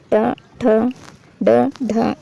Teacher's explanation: लेकिन इनका उच्चारण स्थान क्या है, तो ये मूर्धा है, जिसमें जीभ ऊपर की ओर लगती है। ट, ठ, ड, ढ, ये हमारे मूर्धा में है।